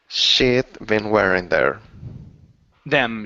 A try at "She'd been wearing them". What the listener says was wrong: She'd been wearing them. So you're saying shid. Instead of shid, it's E. Push the tongue up a little higher. She'd been wearing them.